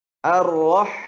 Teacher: Karena ha memiliki sifat rakhawah. Bunyinya harus mengalir terutama ketika sukun. Ar-rah. Mengalir.